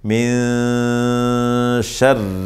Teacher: میں سے شین ہے، تو اخفا ہوگا، اس کو کہتے ہیں اخفاء حقیقی، ایک الف کے برابر ناک میں آواز چھپائیں گے